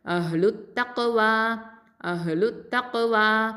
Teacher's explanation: வா ஃபதா அலிஃப் சகைரா வா 2 ஹரக்கத்தை நீட்டணும்